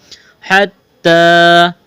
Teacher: ہا گلے کے درمیان سے زور لگا کر ہا کو نکالنا ہے۔